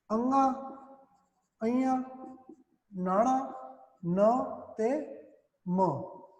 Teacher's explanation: ਅਨੁਨਾਸਿਕੀ ਧੁਨੀਆਂ ਉਹ ਹੁੰਦੀਆਂ ਨੇ ਫਰੈਂਡਸ, ਜਿਨ੍ਹਾਂ ਨੂੰ ਬੋਲਣ ਲੱਗਿਆਂ ਸਾਡੇ ਨੱਕ ਦੇ ਵਿੱਚੋਂ ਜਿਹੜਾ ਸਾਹ ਹੈ, ਠੀਕ ਹੈ ਨਾ, ਉਹ ਨਿਕਲਦਾ ਬਾਹਰ।